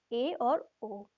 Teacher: अर्धसंवृत जिसमें मुंह आधा बंद होता है, वो है ए और ओ।